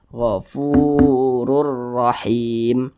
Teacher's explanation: kedua-duanya huruf ra ini dibaca tebal dibaca tafkhim Ini huruf ro dibaca tebal karena dia memiliki tanda baca dhahtain · Mad thii panjangnya dua harakat atau kira-kira dua ketukan · hukumnya idgham bilaghannah cara bacanya itu dimasukkan tapi dia tidak didengungkan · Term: mad tabi'i